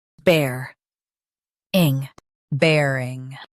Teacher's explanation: Stress bear and keep ing soft.